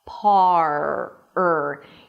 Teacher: The tongue curls in the back and creates this tense sound, and that's the R.